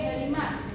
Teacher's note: Secara umum, kendala tersebut mencakup: yang pertama ada keterbatasan pendengaran, yang membuat anak sulit membedakan perubahan bunyi dalam satu suku kata. Misalnya, kata harimau bisa diucapkan hanya sebagai harima karena U di akhir tidak terdengar dengan jelas